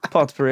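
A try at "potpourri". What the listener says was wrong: The t is silent. Yes, there you go.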